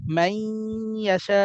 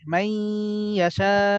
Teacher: নুন সাকিনের পর ইয়া আসছে, ইদগাম মিলায় পড়ছি এবং গুণনা করছি